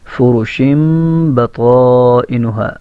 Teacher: یہ طا کے اوپر مد متصل ہے، اس کی مقدار 4 یا 5 الف ہے. جتنی دیر کے اندر 4 انگلیاں 5 انگلیاں کھلتی ہیں اتنی دیر اس کو لمبا کرنا ہے.